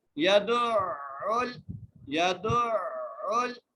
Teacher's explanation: دال کو عین سے ملاتے ہوئے مضبوطی کے ساتھ پڑھنا ہے اور عین کو ادا کرنا ہے. یہاں پر اکثر مسٹیک یہ ہو جاتی ہے یدعو پڑھتے ہیں تو یدعو یہ لفظ غلط ہے. · ٹھیک ہے، عین سے اس لیے ملا رہے ہیں کیونکہ عین کے اوپر تشدید ہے. عین جو ہے وہ حلق کے درمیانی حصے سے ادا ہوتا ہے